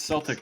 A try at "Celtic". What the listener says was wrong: Celtic? It's not pronounced like an S.